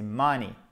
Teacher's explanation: Accent tonique aussi sur la première syllabe.